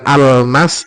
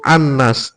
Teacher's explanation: al-nya hilang samar masuk ke dalam nun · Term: alsamsiyah